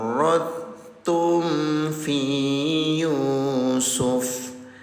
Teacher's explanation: Karena tempat lahirnya sama atau tempat keluarnya sama sehingga bacaannya tidak dipantulkan langsung masuk ke huruf ta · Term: idgam mutajanisain